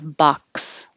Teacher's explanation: when the letter X is in the middle or at the end of position of a word it will sound like a k and an S